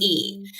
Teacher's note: an example of a front vowel is e so our tongue our tongue is really high high and really anterior in our mouth